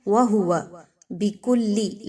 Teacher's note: واو، ہا اور واو تینوں پر جو حرکات ہیں وہ ایک جیسی لینتھ میں پڑھی جائیں گی، کسی ایک کو زیادہ لمبا یا کسی ایک کو کم نہیں پڑھنا بلکہ آپ نے سب کی حرکات ایک جیسی چھوٹی سی رکھنی ہے.